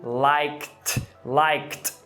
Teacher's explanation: Novamente, o K é desvozeado, você coloca um T.